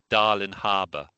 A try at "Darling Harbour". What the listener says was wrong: Neither have got the G. It's got to have a G. It's a little almost like pronouncing Krakow as Krakow. Darling.